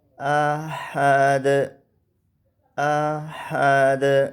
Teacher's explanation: دال کے اوپر قلقلہ ہے